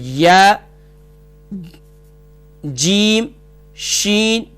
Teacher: وہ حروف جو زبان کے درمیان اور گلے کے زبان کے درمیان اور تالو کے درمیان سے ادا ہوتے ہیں، انہیں حروف شجریہ کہتے ہیں، اور ان کے ادا کرتے وقت یقیناً درمیان زبان میں تھوڑی سی سختی پیدا ہوتی ہے